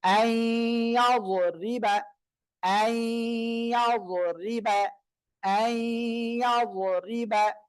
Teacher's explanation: নুন সাকিনের পরে ইদগামে বা গুন্নার অক্ষর ইয়া আসছে, এজন্য কি করতে হবে? গুন্নার সাথে মিলিয়ে পড়তে হবে।